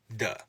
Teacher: stop meaning that we're completely blocking off the air flow in our vocal tract and then releasing it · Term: D sound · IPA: /d/